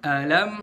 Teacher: Dan seringkali ulama-ulama qiraah itu menekankan di bagian sini, setiap kita ketemu kata alam, antara a sama lam harus dibedain intonasinya. Pertama a, terus naikin dikit di lam.